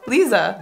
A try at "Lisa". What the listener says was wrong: Yeah, it's just the S is a little different. Lisa.